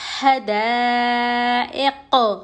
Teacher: قوف پر ہم جزم دے کے سانس چھوڑیں گے تو یہ قلقلہ ہو جائے گا کیونکہ قوف حروف قلقلہ میں سے ہے.